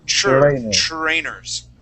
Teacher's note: We have TR sounds. We're almost pronouncing a CHR, like chur.